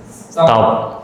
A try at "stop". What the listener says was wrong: No, stop is not correct. This one, short vowel sound. So short vowel sounds So you say stop.